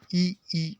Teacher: और ई का उच्चारण स्थान है यहाँ पर तालव्य। ई ऐसा उच्चारण करके देखिए तो समझ में आता है कि आपकी जीवा कहाँ पर स्पर्श हो रही है।